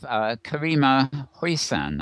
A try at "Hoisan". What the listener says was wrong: Very close, yeah, Hoisan. I put a little of an accent on the last syllable.